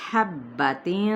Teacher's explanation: ہا باریک کرتے ہوئے وسط حلق سے ادا کرتے ہوئے با پہ ہم نے زور دینا ہے ، با کی حرکت کو کھینچیں گے نہیں، تین یعنی تنوین